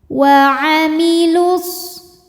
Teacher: sukun pertama dilepaskan ketika wasal, jadi lamnya pendek karena nggak ada wawnya. Wa amilus.